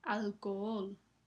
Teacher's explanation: aquí la H no se pronuncia. Esto hace que haya dos O juntas y forman un hiato